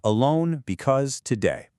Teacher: And the absolute king of these in English is the iamb. That's an unstressed syllable followed by a stressed one, da dum.